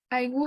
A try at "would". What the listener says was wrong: No es would, we say would, okay? Sin la L.